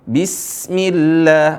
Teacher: Perhatikan huruf sin di sini. Huruf sinnya dialirin suaranya ketika sukun. Bismillah, bukan Bismillah, seolah-olah qalqalah.